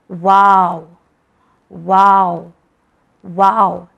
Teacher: ये होठों की गोलाई से अदा होता है